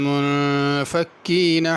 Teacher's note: یہ ہر جگہ چھوٹا کاف ہے، تو اس کو باریک ہی پڑھنا ہے، موٹا نہیں کرنا